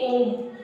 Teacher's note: ओम में दोनों होठ टच हो रहे हैं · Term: ओष्ठ